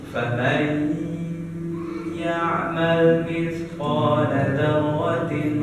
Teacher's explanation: Ketika ada nun mati bertemu dengan wa atau bertemu dengan ya atau mim atau nun, maka dia dibaca di biguna. Cara bacanya 2 harokat, ditahan 2 harokat dengungnya. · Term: idgham biguna